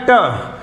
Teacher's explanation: ट होता है तालु और जीभ के बीच में जो टकराव जो होता है उसे कहते हैं मूर्धन्य। आप उसको एकदम फील नहीं कर सकते, लेकिन धीरे धीरे आप उससे बोलेंगे तो अनुमान लगेगा कि थोड़ा सा डिफरेंस जरूर है।